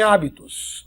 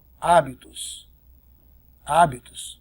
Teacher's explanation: porque a sílaba tônica é a antepenúltima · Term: proparoxítona